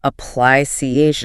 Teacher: Stress on the third syllable there.